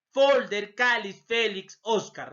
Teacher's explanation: La mayor fuerza de voz, penúltima sílaba